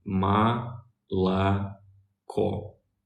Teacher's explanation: the last o is stressed